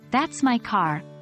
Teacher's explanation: The Voice Rises on my and falls on car